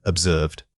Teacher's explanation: This word is often mispronounced because people drop the final two sound. Make sure you articulate that slight puff of air at the end. The middle vowel needs to be drawn out slightly for maximum clarity.